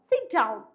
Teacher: use falling intonation to signal authority that the thought is finished